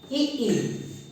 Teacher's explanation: ई तालु, जीभ का पीछे का हिस्सा, लेकिन टच नहीं हो रहा है